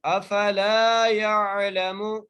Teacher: لام کو ایک الف مقدار کھینچ کے پڑھیں گے, یا کو عین سے ملائیں گے